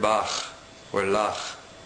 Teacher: When there is no dot in the letter kaf, it becomes chaf. This sound is made simply by slightly causing friction on the soft palate of the roof of your mouth, in the back part of your mouth, with the midsection of your tongue.